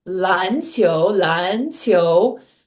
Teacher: two second tones back to back is really hard. 嗯 But because I learned how to say this word 篮 球, 篮 球, it's like I have the rhythm of two second tones back to back in my head.